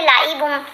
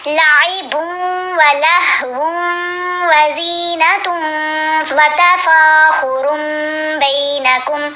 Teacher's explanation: با کو واؤ کے ساتھ ملائیں گے غنہ کرتے ہوئے، پھر یہاں واؤ کو واؤ کے ساتھ ملائیں گے غنہ کرتے ہوئے، تا کو بھی واؤ کے ساتھ ملائیں گے غنہ کرتے ہوئے. ٹھیک ہے، تو یہاں ہم ان کے درمیان میں وقف نہیں کریں گے.